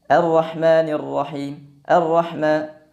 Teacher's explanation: kesalahan yang sering terjadi pada pengucapan huruf ha yang kedua adalah lemahnya aliran nafas Khususnya ketika huruf Ha ini berharakat sukun